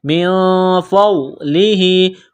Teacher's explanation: نون ساکن کے بعد فا ہے، حروف اخفا ہے تو نون ساکن پر غنہ کریں گے